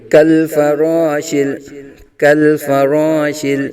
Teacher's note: لام بھی بریک، کاف بھی بریک، را کو پر پڑھیں گے، ایک الف تک کھینچ کے پڑھیں گے